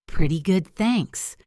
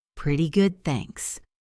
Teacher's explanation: Listen to the intonation. Pretty good, thanks. It goes down at the end.